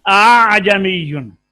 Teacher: حمزہ اور الف کی درمیانی کیفیت ہوگی، نہ خالص الف اور نہ خالص حمزہ پڑھا جائے گا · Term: تسہیل